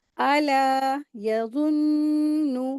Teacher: नून मुशद्दद है, गुन्ना करेंगे।